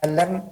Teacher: Pas emnya baru masuk ke dalam hidung.